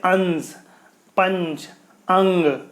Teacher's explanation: इसके उच्चारण में क्या है, नाक से अधिक सांस निकलती है और मुंह से कम निकलती है। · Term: अनुस्वार